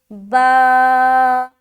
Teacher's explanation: کھڑا زبر برابر ہوتا ہے الف مدہ کے. کھڑا زبر کو ایک الف کے برابر کھینچ کر پڑھیں گے